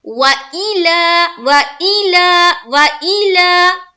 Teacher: حمزہ زیر اے نہیں، حمزہ زیر ای · اب دیکھیے، واو زبر وا، حمزہ زیر ای، لام زبر لا، لام کو صرف ایک الف کے بقدر کھینچنا ہے، باقی واو کو بھی نہیں کھینچیں گے اور حمزہ کو بھی نہیں کھینچیں گے۔ حمزہ میں یہ خیال رکھنا ہے کہ حمزہ مجہول نہ ہونے پائے، کیونکہ حمزہ کے نیچے زیر ہے، اور زیر اور پیش میں ہی مجہول کا زیادہ تر چانس ہوتا ہے مجہول ہو جانے کا، تو مجہول نہ ہونے پائے۔